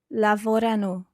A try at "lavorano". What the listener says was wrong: I'm not 100% sure where you're stressing that. Remember, it's lavorano.